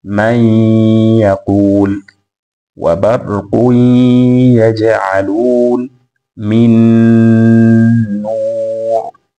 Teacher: wamesoma kwa idgham nun yenye sakna pamoja na tanwin, ma'al ghunna, pamoja na kuweka ghunna fi hurufi yanmu, katika herufi za yanmu, ya, nun, mim na waw.